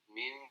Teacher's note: Min, nah itu tetap mengalir. Bunyinya tetap mengalir karena dia getarnya ke hidung juga masuk, ke bibir juga ada. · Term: iklab